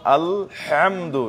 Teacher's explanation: এটা বড় হা নাকি, গলার মধ্যস্থল থেকে হাটা আসে